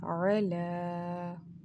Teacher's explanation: Now we can also see a sign of mud here present just above the standing fatha. So we will prolong the sound of lam for almost 4 second or 6 second, but the preferred time of prolongation is for almost 4 seconds.